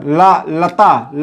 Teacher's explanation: यानी जो ला है कैसा वर्ण है? पार्श्विक वर्ण है